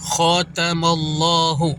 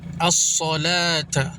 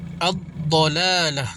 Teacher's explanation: Cara bacaan istila ialah wajib ditebalkan yakni tafkhim bunyi bacaannya.